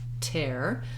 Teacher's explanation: Watch out for that T sound at the start of words in American English. It is a true T. We let a little puff of air out, tear. So that's something to be aware of depending on what accent patterns you have.